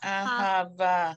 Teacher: the accent is on the last syllable